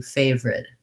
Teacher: we don't really say the middle syllable in this word. We reduce it down to favorite, 2 syllables.